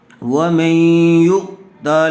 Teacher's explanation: یہاں بھی ادغام مع الغنہ کا ہی قاعدہ ہوگا۔ نون ساکن کے بعد حروف یرملون میں سے یا آئی ہوئی ہے، اس لیے غنّے کے ساتھ ملا کر پڑھیں گے۔ اس کو ادغام مع الغنہ کہتے ہیں۔